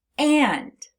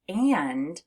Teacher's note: when you have a short A and an N, it sounds like it's coming through your nose, which is why when we say the word and, you actually feel a little bit of a buzzing in your nose. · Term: nasalized A